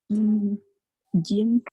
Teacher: jim makhrajnya tengah lidah bertemu dengan langit-langit bagian atas.